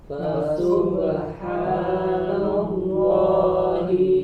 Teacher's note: huruf H di pangkal tenggorokan